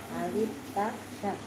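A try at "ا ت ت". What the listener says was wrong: Bukan sa tapi ta. Alif ta ta.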